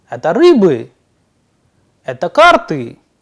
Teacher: the intonation again is rising at the end